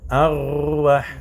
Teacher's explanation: Ra'un, quand tu dis arwah, l'extrémité, le bout de la langue doit trembler